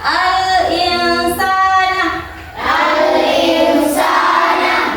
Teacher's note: cara membacanya yaitu samar dan mendengung, dibaca al-insana.